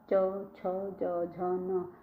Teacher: जो हमारी जीभ है वह तालु में रखती है